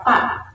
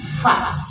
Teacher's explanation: Jadi fa ya. Di fa ada tiupan. Jadi tidak pa tapi fa ya. · fa ada tiupan, perut bibir bawah dengan ujung gigi depan atas